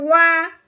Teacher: عربی کا واؤ ہے، ہم نے اس کو ہونٹوں سے ادا کرنا ہے اور دانتوں سے ادا نہیں کرنا. جو اردو کا واؤ ہوتا ہے وہ دانتوں سے ادا ہوتا ہے.